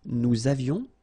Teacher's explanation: Nous avions, little liaison, final S not pronounced